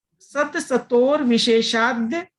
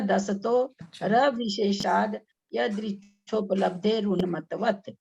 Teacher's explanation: दसतो स अलग बोलना है, दस्तो अलग बोलना है। दसतो फिर र आगे बोलना है, इसमें दसतोर नहीं बोलना है।